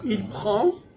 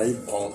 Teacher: On n'entend pas le N, non, il prend